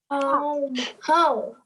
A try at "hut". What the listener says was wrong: Coat, that's not a word. Let's do the short vowel sound.